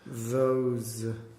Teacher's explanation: If you don't feel that tongue coming out between your teeth, you're going to go d.